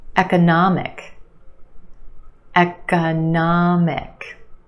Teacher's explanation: We've got four syllables. The third syllable is your stressed syllable. Na, the ah sound.